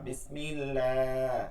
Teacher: বিসমিল্লাহ, এটা লাটা চিকন হবে